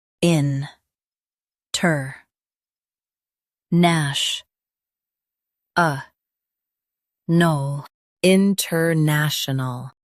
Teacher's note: Stress ash and keep ol soft.